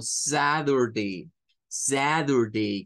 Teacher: cambia el sonido de la t por un sonido como una d y otros nos lo van a hacer como una r entonces